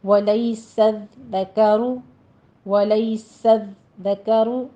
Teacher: لئی میں یا لین ہے، آگے سین ہے، اس کے بعد زال کے اوپر آپ نے تشدید ادا کرنی ہے، لیکن زال میں سیٹی کی آواز بالکل نہیں آنی چاہیے